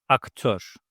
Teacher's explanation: Last vowel is ö. It's a front vowel